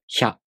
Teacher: you first make the [ç] consonant sound. Then, you consciously put the [j] sound, again a really short one, before the [a] vowel.